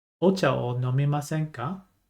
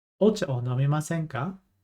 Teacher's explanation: there's a bit of a rising intonation at the end, with our questions.